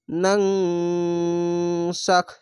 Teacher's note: নুন নুন জবার নাং বাংলা অনেস্কার মত এই ইকফা গুন্নাটি হবে